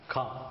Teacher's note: Innermost part of the tongue touches the innermost palate.